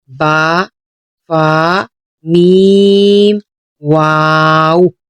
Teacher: ان حروف کی ادائیگی ہونٹوں سے ہوگی اور باقی تمام حروف پر ہونٹ نہیں ہلنے چاہیے